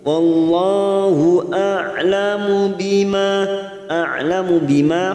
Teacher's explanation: Wallahu, lam jalalah yang didahului fathah kita baca tafkhim.